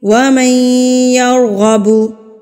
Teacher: تو میم زبر ما جو ہے وہ ڈائریکٹ یا سے جا کے ملے گا. نون مدغم ہو جائے گا اور میم جو ہے وہ ڈائریکٹ یا سے جا کے ملے گا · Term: ادغام